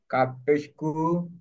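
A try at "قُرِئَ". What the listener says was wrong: কাফ হবে না, কাফ না ভাই এটা।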